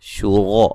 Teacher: را کو موٹا ادا کیا جائے گا، را کے اوپر زبر ہے۔